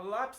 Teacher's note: lápis tem duas sílabas e a sílaba tônica é a penúltima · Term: paroxítona